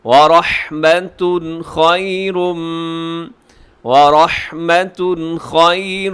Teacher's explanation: مِّنَ اللَّهِ وَرَحْمَةٌ خَيْرٌ، ورحمۃ را پر ہے، اور رحمتن کے آخر میں تنوین، تنوین کے بعد ہے خا، خا ہے حروف حلقی کے اندر شامل، تو یہاں پہ ہم کریں گے اظہار۔